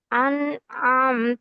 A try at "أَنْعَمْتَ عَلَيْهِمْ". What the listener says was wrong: நீங்க அண்ண உச்சரிச்சுட்டு கஷ்டப்பட்டு ஐன் எடுக்கிறீங்க, அது பிரியுது. அன்அம்த அன்ஆம்த அல்ல. அன்அம்த இன்ன சேரணும்.